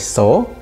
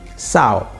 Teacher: Kemudian nukleus o, ya, nukleus o diubah menjadi diftong au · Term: diftongisasi